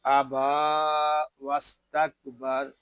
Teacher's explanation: سین جو ہے اس میں سیٹی کی آواز آئے گی